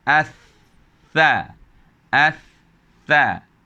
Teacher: bunyi daripada hujung lidah menyentuh gigi